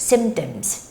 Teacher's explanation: the P doesn't have like that big sound there. So you don't make a clear P sound